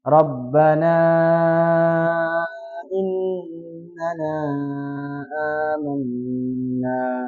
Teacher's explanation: Jadi ada hamzah ketemu huruf mad. Maka dia dibaca 2 harakat sebagai mad badal.